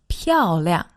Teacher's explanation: that's a fourth tone and a neutral tone